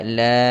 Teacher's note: Lam nak baca berapa harakat? 6 harakat.